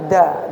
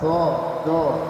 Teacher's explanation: Do itu sisi lidah menyentuh gigi geraham atas. Jadi bukan ujung lidah menyentuh langit-langit nih ujung lidah ya. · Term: huruf do